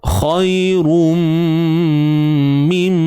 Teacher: Sekali lagi kita jumpa tanwin bertemu mim. Pastikan dengung kadarnya 2 harakat lah. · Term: idgham bi gunnah